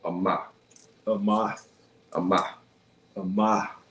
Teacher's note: So in that case, it like, especially with that H too, it's gonna be like a soft ha sound. So it's almost gonna be like adding a breath to it at the end.